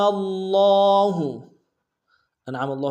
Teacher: تشدید زور دیں گے، لام کے اوپر کھڑا زبر ہے، ایک امتداد میں کھینچیں گے